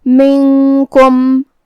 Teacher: کاف حروف الاخفاء میں سے ہے، تو ہم یہ حکم کو غنہ کے ساتھ ادا کریں گے. منکم.